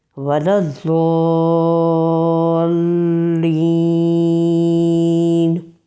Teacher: ثنایا علیہ تک لگے کروٹ زبان کی داڑھوں کے ساتھ، زبان کی نوک سامنے کے اوپر کے 2 دانتوں کے ساتھ آ کر ٹچ ہوگی تو ضاد ادا ہوتا ہے۔ آواز بھرپور دباؤ کے ساتھ، جماؤ کے ساتھ رکتی ہے، پر ادائیگی کے ساتھ۔